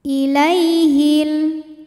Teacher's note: ada Ya Sukun didahului harakat fathah maka dibacanya lembut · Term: harfulfulin